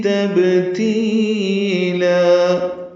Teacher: نرمی سے پڑھیں گے، تبتیلا میں با ساکن پہ قلقلہ ہے، تی یا مدہ اور لا مدہ عوض الف مدہ ہے، 2 حرکات لمبا کریں گے